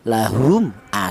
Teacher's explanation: huruf mim ini keluarnya huruf berasal dari bibir, itu artinya syafawi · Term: Idhar syafawi, idhar syafawi